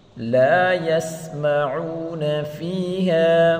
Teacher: لا کو ایک الف کی مقدار کھینچ کر پڑھیں گے، الف مدہ ہے